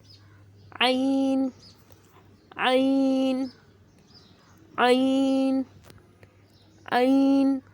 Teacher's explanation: عین عین عین عین حلق کے درمیانی حصے سے ادا ہوتا ہے۔